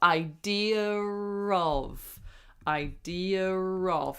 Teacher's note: So, that's when we put an R in between the two words to link them. So, we add an R sound in between those two words um so that we can link them together. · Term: intrusive R